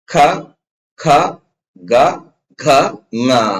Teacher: ಮೂಲಕ ಹುಟ್ಟತವಪ್ಪ ಅಂತ ಕೇಳಿದ್ರೆ ಕ ವರ್ಗ ಕಂಟ್ಯ ದೊನ್ಯಾಂಗದ ಮೂಲಕ ಹುಟ್ಟುತ್ತೆ ಕಂಟ್ಯ ಈ ಕಂಟ್ಯ ಅಂದ್ರೆ ಈ ಗಂಟಲು ಅಂತ ಬರುತ್ತಲ್ಲ ಈ ಭಾಗದ ಮೂಲಕ ಈ ಅಕ್ಷರಗಳು ಹುಟ್ಟುತ್ತವೆ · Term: ಕಂಠ್ಯವರ್ಗ, ಕಂಠ್ಯ ವರ್ಗ